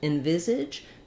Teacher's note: we're unstressed on the first syllable here so it may have the reduced vowel